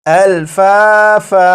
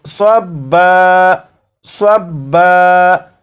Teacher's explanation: جب یہاں پر وقف کریں گے تو دو زبر کو الف سے بدل دیں گے